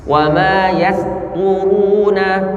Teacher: perhatikan sinnya jangan dibaca tebal, yastu, tapi yas, senyum lebar, yas tipis.